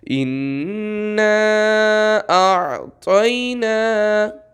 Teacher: اب یہاں پہ دیکھیں عین آ رہا ہے، الف آ رہا ہے، تو آپ کی آواز پہلے الف پہ جائے گی یعنی منہ سے نکلے گی، اور پھر آپ کی آواز گلے میں جائے گی۔ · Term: الف اور عین